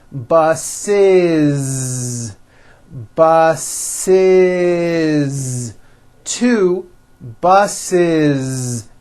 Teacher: The last sound you hear is that voiced Z.